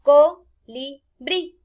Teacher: al pronunciarla, la fuerza cae en la sílaba brí, que sería la última.